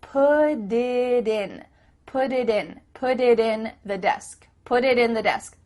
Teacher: desk do you see how that makes it much faster because instead of spending the time to let the air come out of your mouth your tongue is just tapping the top of your mouth to make a d